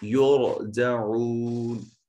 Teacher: واو مدہ ہے، اس کو ایک الف کے برابر لمبا کریں گے